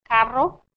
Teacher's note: You hear the rolling R's right there.